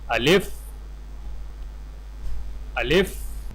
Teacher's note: الف کو بغیر کھینچے لام اور فا کے ساتھ فوراً ملائیں